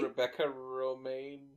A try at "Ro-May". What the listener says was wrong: You're saying Maine. It's May.